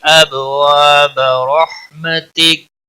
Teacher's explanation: اب با ساکن پر قلقلہ ہوگا، وا الف مدہ ہے، ایک الف کے برابر کھینچ کر پڑھیں گے، با کو کھینچنا نہیں۔